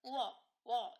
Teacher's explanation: 워는 단모음 우와 단모음 어의 결합으로 이루어진 이중모음인데요. 우는 후설 모음이자 원순 모음이자 고모음에 해당을 하고 어는 후설 모음이자 평순 모음이자 중모음에 해당을 합니다. · 그러면 우어, 워 이렇게 발음을 하실 때 혀의 최고점은 후설 모음으로 동일하지만 입술 모양이라든지 혀의 높이가 달라진다는 것을 알 수 있습니다